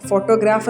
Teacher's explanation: ഫോട്ടോഗ്രാഫ് എന്ന് പറയുമ്പോൾ നമ്മൾ ആദ്യത്തെ പാർട്ടിനാണ് നമ്മൾ എന് ചെയ്യുന്നത് സ്ട്രസ്സ് കൊടുക്കുന്നത് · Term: സ്ട്രസ്സ് ഷിഫ്റ്റ്